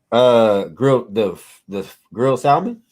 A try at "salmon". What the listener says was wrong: it's salmon, babe. The L is silent. You saying salmon is like someone saying they're gonna get knighted.